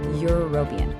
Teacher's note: That first sound, that Y sound is a consonant.